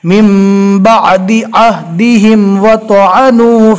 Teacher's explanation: عین جو ہے برابر حلق سے اچھے سے ادا کرنا ہے